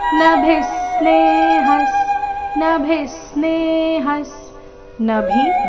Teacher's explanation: ಆಘಾತ ಮುಂದೆ ತ್ರ ಬಂದ ಕಾರಣ ಯಸ್ ಸರ್ವತ್ರ ನಭಿಸ್ನೇಹಸ್ ನಭಿ ಸ್ನೇಹಸ್ ನಭಿ ಭಿ ಮಹಾಪ್ರಾಣ ರಸ್ವ ಅದರ ಮೇಲೆ ಆಘಾತ